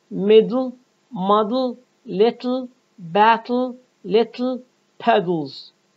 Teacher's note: ta and da are released when followed by la, by lowering only the sides of the tongue, allowing air to pass over the side, over the sides. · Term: lateral explosion